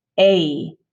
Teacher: for example that first vowel in english is pronounced a and you can hear i start with a and then i end with e